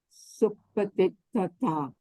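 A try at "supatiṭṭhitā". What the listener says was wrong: Supatitita. Titita, not titata.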